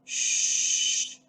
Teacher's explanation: we have this little space where the sound comes out and this is uh a fricative sound the characteristic of this fricative sound is we can actually prolong the sound as in this case shh because the sound the air comes · shh because the sound the air comes freely comes out freely this is also a voiceless sound that means that we don't actually use our vocal cords this is not necessary for this sound there is no vibration